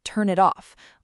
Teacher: Written separately, three words, but naturally, it sounds more like turn it off, almost like one smooth word. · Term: linking